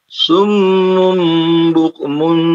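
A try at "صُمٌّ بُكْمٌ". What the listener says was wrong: Oke, ditahan lagi. Mim ada apa namanya gunnah. Ya, jadi ditahan 2 harakat. Itu ada 2 ditahan ya di situ.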